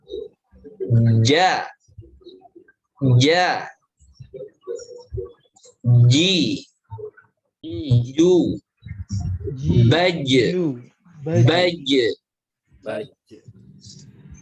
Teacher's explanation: Huruf jim ini nempel ke langit-langit. Dari 3 huruf yang keluar dari tengah lidah, yang menempel, betul-betul menempel ke langit-langit, itu hanya huruf jim.